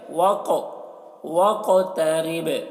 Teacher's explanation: क़ाफ में कलकला करेंगे